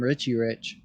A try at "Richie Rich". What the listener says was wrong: You just called him Ricci.